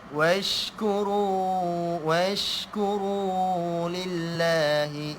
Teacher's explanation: Angin shin, huruf shin ada angin yang banyak.